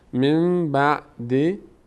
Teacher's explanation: نون ساکن بعدش با اومده تبدیل به میم شده نون تلفظ نمیشه میم تلفظ میشه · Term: قاعده اقلاب